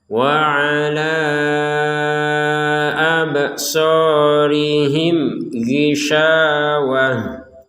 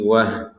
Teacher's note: Seperti huruf H ya, berlubang lah gitu ya. Maka ini dibacanya sebagai huruf H kalau kita berhenti. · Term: tak marbutoh